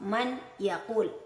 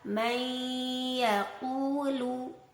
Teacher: Dan cara membacanya yakni harus meleburkan atau harus memasukkan huruf nun sukun atau tanwin tersebut ke dalam salah satu huruf yang 4 tadi, entah bertemu dengan ya ataupun nun, mim, dan waw. Maka cara membacanya harus diidghamkan dengan cara mendengung. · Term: idgham bi gunnah